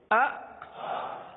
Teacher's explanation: یہ جھٹکا ہے, یعنی آپ ایک دم سے آواز کو روک لیں